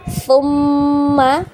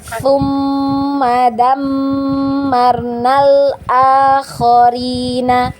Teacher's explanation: huruf nun dan huruf mim kalau bertasydid maka kita wajib gunnah ya. Digunnah ya, didengungkan. Kemudian dengungnya ditahan 2 harokat ya.